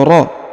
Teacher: huruf ro tanwin an berubah menjadi a ya, atau ro, bukan lagi ron, karena kita berhenti di sini